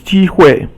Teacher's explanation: 机 is first tone, and 会 is basically 轻 声.